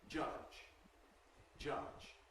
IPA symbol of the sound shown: ʤ̥ʌʤ̥